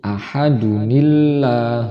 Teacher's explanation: di sini tidak ada Nun Wik Wayah maka kita membacanya harus Hamzah washal itu diganti menjadi Nun yang berharokat